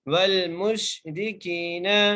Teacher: ٹھیک ہے، کاف کو ہم ایک الف کی مقدار کھینچ کے پڑھیں گے کیونکہ یہاں پر جائے مدہ کا قاعدہ لگ رہا ہے۔ والمشرکین، نون کے اوپر زبر ہے بغیر جھٹکا دیے بغیر کھینچے پڑھیں گے